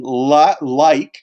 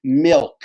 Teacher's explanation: one is toward the front of the mouth as in like and another one is in the back of the mouth milk so the tongue is up towards the back you don't have